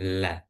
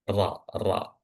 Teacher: Jadi maksudnya berdekatan ya itu tadi lam agak ke depan dan ro agak ke belakang